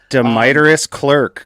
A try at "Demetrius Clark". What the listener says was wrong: is literally the worst way that I've ever heard my name pronounced. dev ed at Netlify, community hype man.